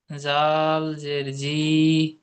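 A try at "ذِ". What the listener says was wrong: রি টান হচ্ছে কেন?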